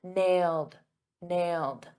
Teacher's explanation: notice in the past simple that e d is a very soft D